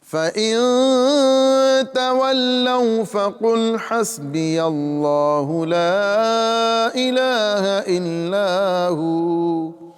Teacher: نون ساکن ہے، اس میں یہاں پر اخفا کریں گے کیونکہ حروف اخفا میں سے تا آ رہا ہے · جلالت اللہ کے لام سے قبل زبر آ رہا ہے، اس لام کو پر کریں گے